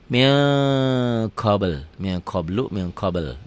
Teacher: Hukumnya ikhfa. Tulisannya min. Min. Tanpa G ditulisnya. Dibacanya jadi ming.